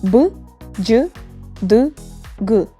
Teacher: Between 2 vowels, they are voiced. Voiced sounds are b, j, d, g.